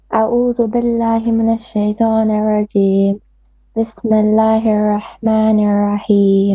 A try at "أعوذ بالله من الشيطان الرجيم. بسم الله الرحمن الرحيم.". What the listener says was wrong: Make your ra more heavy a bit, and then slow down your recitation. Try to pronounce everything. Don't speed up, okay?